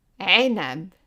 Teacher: the sound of this letter is like english vowels while tightening your throat or also like someone is choking you so it's a sound